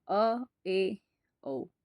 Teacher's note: अर्ध विवर्त जो आधा खुला हो